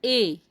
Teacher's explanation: ए का उच्चारण स्थान कंठ और तालु